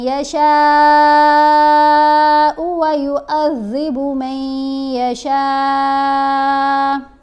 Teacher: شین کے اوپر دونوں جگہوں پر یہ جو مد ہے مد متصل ہے، اس کو 5 الف کی مقدار جتنا لمبا پڑھیں گے